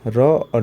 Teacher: दंत मूल से र और ल निकलता है।